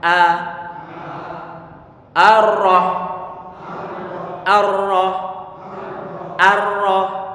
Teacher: Sehingga pastikan hamzahnya kita baca tipis a.